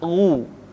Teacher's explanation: Ketika dhammah, baru bibir kita dimonyongkan sehingga keluar vokal u dengan sempurna.